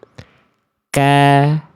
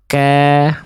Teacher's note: Makanya bunyi vokal A-nya murni. Karena hurufnya tipis. Pangkal lidahnya turun ketika harokat fathahnya keluar.